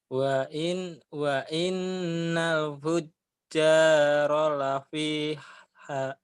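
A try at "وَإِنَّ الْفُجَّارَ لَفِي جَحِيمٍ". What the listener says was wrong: Jahim, Jahim, Hahim, Hahim. Jim dulu kan titiknya satu nih. Jahim. Emang numpuk ya bikin bingung. Itu Jahim ya, Mas.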